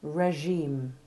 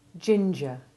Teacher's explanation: for the French soft G2, you don't press your tongue against the roof of your mouth as you do for the English soft G1. Instead, you leave a very tiny gap, and when you drop your jaw and expel the air, you avoid the more dental component of that sound and produce a smoother one.